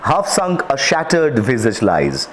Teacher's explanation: the short a sound in half and shattered is repeated